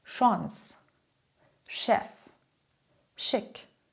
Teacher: Die zweite Gruppe kommt aus dem Französischen. Hier klingt ‚ch‘ wie ‚sch‘.